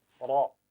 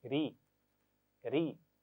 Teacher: ज़बर के साथ हमने रा की आवाज़ को मोटा पढ़ना है, रा, लेकिन ज़ेर के साथ बारीक, री, री। बिल्कुल होठों को स्माइल कीजिए और पढ़िए री।